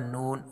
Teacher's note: نون میں خیشوم، یعنی نون جو ہے ناک سے ان کی آواز آتی ہے